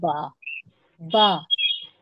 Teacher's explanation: दोनों दोनों होठों के गीले हिस्से से, गीला मतलब जो आगे होते हैं होठ जो दिख रहे होते हैं वो होते हैं सूखे होठ, है ना।